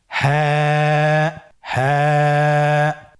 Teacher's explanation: হা হরফটি উচ্চারণের ক্ষেত্রে অবশ্যই বারিক হবে এবং এক আলিফ টেনে পড়তে হবে।